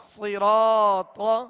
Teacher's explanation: را پر زبر ہے، را کو پر پڑھیں گے، را کے ساتھ الف مدہ ہے، ایک الف کی مقدار، اسے کھینچ کر ادا کریں گے۔ طا حروف مستعلیہ میں سے ہے، اسے بھی پر پڑھنا ہے۔